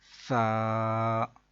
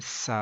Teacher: ثا کو پڑھتے ہوئے سا سیٹی کی آواز بالکل بھی نہیں آئے۔ تو اس کا ایک طریقہ ہے کہ آپ اپنے اوپر والے دانت اور نیچے والے دانت جو ہیں ان کے درمیان اپنی زبان کی نوک کو تھوڑا سا باہر نکال کے پکڑ لیں نرمی سے، اور پھر ادا کریں سا، تو پھر سیٹی کی آواز نہیں نکلے گی۔